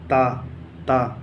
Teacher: تا کا مخرج ہے زبان کی نوک اور اوپر کے سامنے والے دانتوں کی جڑ